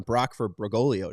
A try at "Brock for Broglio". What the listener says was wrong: Brolio. You don't pronounce that G.